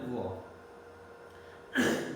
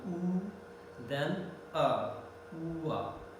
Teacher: But here it is said labiovelar, because velum and lips both work together. In the beginning, both the lips coming together almost, then the back of the tongue goes towards the velar position. So labiovelar. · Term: labiovelar semi-vowel